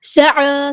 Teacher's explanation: سین کی سیٹی واضح کرنی ہے، عین کو وسطی لیکن یہ تھوڑا سا ادا کرنا ہے، 2 کاؤنٹ لمبا کرنا ہے.